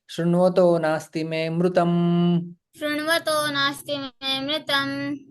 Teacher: यहाँ पे विसर्ग का ओ में परिवर्तन हो जाता है, और इंग पदार्थात अतिथि अवग्रह भी आ जाता है।